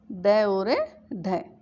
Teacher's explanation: तो जिन वर्णों का उच्चारण जीभ की नोक को उलटकर कठोर तालु को झटके के साथ स्पर्श करके किया जाता है वे उच्छिप्त या ताड़नजात वर्ण कहलाते हैं। यानी जीभ की जो नोक है पहले उल्टी होती है और फिर झटके के साथ कठोर तालु को छू करके आती है